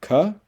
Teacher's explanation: there's a voiceless velar stop ka